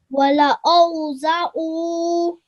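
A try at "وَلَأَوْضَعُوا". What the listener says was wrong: Well done. Excellent. That was really, really nicely read, mashallah.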